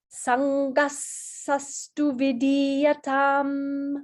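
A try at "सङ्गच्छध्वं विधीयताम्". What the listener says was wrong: So, Sangasatsu. Vidhiyata. So make sure you get the aspirate.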